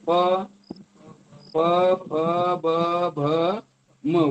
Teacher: ओठ चिटकल्याशिवाय आवाज येत नाही कोणची ती येत नाही प ब भ म ओठ न चिटकवता · ओठातून ओठ चिटकल्याशिवाय आवाज येत नाही. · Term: ओष्ट व्यंजन, ओष्ठ